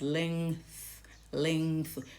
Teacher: So the tongue moves now, the back of the tongue moves from the soft palate to coming between the teeth, and then you blow out. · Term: nasal sound